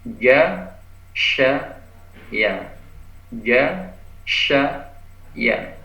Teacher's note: tengah lidah. Tengah lidah ini hurufnya ada 3, jim, shin, ya